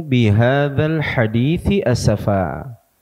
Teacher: ini dua huruf yang dari makharijul hurufnya sudah berbeda tempatnya satu tsa itu di ujung lidah bertemu dengan ujung gigi seri bagian atas sedangkan huruf Sinin ujung lidah bertemu dengan belakang gigi seri bagian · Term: huruf tsa